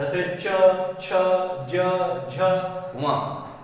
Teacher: उच्चारण करते समय जीभ मुंह के ऊपर की छत के पिछले वाले भाग को स्पर्श करे उसे कहते हैं तालु।